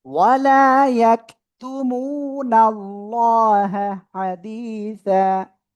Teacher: এখানে একালিফ টান আর আল্লাহ শব্দের মোটা আওয়াজে পড়তে হবে